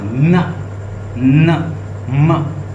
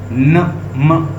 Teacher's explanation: कुछ साउंड जो है वो नाक से, न म, आप कहें न म, आपको ऐसे फील होगा कि मेरे नाक से साउंड आ रही है